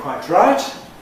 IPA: kwaɪtraɪt